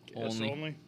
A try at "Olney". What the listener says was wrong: It's not only. Switch the N and the L.